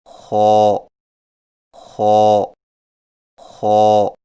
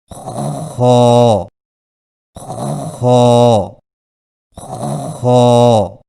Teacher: خا کی ادائیگی میں زبان کی جڑ کو تالو کی طرف بلند کریں، یعنی خا، خا، خا۔